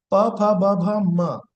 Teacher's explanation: the two lips are touching each other